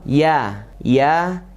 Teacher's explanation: tengah lidah menempel ke tengah langit atas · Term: tasydid huruf ya